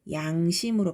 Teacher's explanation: 단어 첫머리 두음에 올 때는 량심 이렇게 발음하지 않고 양심으로 발음한다는 거죠. 르 발음이 아예 없어졌지, 그지? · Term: 두음 법칙